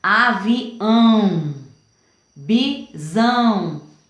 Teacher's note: é esse tio aqui que faz com que o som do A fique nasalizado, que ele saia pelo nariz. Então, não é um A, aqui é um AN, né?